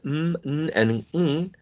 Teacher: n, and ng are nasal sounds, and they are voiced. Because when you produced n, and ng, the vocal cords vibrate. Okay? There are no nasal sounds voiceless.